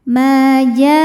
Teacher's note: Sebab ada alif didahului baris fathah. Maka huruf mim panjang dua harakat. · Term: mad thobihiri